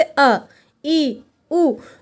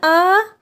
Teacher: दीर्घ स्वर का जब हम उच्चारण करते हैं तो ह्रस्व स्वरों की तुलना में ये दोगुना समय लेते हैं।